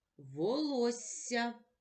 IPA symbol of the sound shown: с':